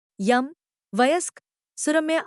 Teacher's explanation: यह सघोष अवृत्ताकार तालव्य ध्वनि है।